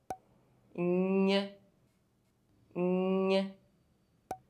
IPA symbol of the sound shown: ɲ